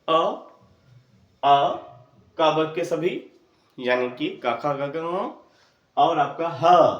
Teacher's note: यहां पर अगर हाथ रखें तो आपको यह भान होगा कि यह जो वर्ण है वो कंठ से उच्चारित होते हैं